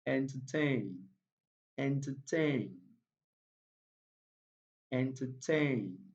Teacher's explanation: the third syllable there takes the primary stress